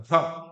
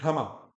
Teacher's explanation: है कौन स्वर रहित है, कि क्या लग रहा है, भ्रा, तो र पूरा बोल रहे हैं ना, तो भ बिना स्वर के बोला जा रहा है